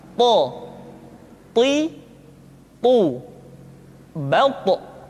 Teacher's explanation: To diucapkan dengan menyentuhkan ujung lidah dengan gusi-gusi dua gigi seri bagian atas. Sifat yang dimiliki oleh huruf to yang mesti nampak ketika kita ucapkan adalah sifat al-isti'la dan sifat al-itbaq. Sehingga dengan dua sifat ini, maka ketika to diucapkan, suara kita terdengar menebal.